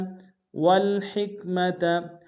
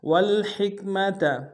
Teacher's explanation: ہا کو کاف کے سامنے آئیں گے، گہرائی سے ادا کریں گے ، ہا کو اور میم و تا کو نم سے ادا